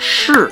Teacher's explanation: So you have words like cai, which means vegetable, and then you also have si cai, which is Western cuisine, and shu cai, which is vegetable, and then you also have shi, or depending on the tone, where the tongue is rolled to the roof of the mouth and almost has like an R sound to it